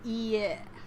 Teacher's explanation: you draw out the length of the sound. It's not quite the same as repeating the vowel twice. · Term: repeated vowels